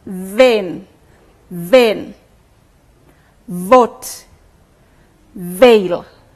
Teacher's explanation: I hope you noticed when you looked at me that the lips and the teeth are actively involved in the production of those sounds